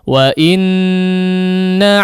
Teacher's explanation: huruf nun dan mim ketika bertasydid, perhatikan gunnahnya, ya, gunnahnya perlu dipanjangkan.